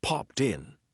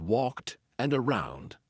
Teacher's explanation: a lot of times we're going to connect that T to the vowel sound